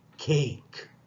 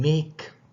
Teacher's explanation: So cake, it comes initially, so you aspirate, and make is coming finally, so you do not aspirate.